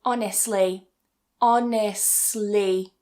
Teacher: what you can do is cut that T in the middle. So, you can just say honestly.